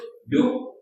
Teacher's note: kaf tu kena alirkan suara nah. Sifat dia yang penting apa? Hams dan juga syiddah.